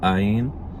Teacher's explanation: Áyin, it could be any vowel sound, basically. It's, in modern pronunciation, just guttural stop